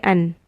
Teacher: If you see a noon with a sukun, just say an. And no gunna. Just clear sound, clear noon sound.